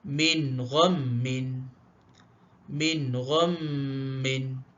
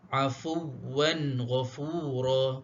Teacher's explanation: Kita jelaskan ya, sebutan kita adalah jelas. Kita jelaskan bunyi huruf nun. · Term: izhar halqi